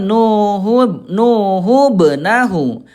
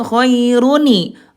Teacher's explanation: nun yang harus dibaca kasrah ketika ada tanda tanwin bertemu dengan hamzah wasal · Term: nun wiqayah